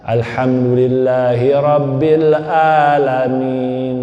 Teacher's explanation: Ain dia ganti dengan alif hamzah.